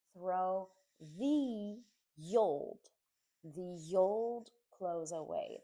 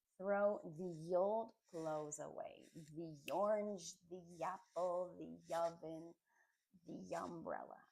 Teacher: A note on pronunciation that you should know is that when at least in American English, when there's a word that starts with a vowel, A-E-I-O-U, a vowel sound, and the comes before it, we actually say the with a Y sound at the beginning of that word